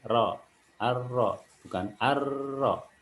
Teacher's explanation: yang harus diperhatikan adalah dia punya sifat taqrir atau bergetar jangan terlalu banyak getarnya